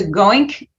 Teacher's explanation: And the ink at the end, it's called final devoicing, where you have an ing, and then the g is actually pronounced, but then it's devoiced. It goes from g to k, so goink.